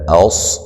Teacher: اوس صاد کو موٹا ادا کریں گے